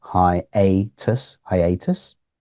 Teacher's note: hi and a seem to be equally stressed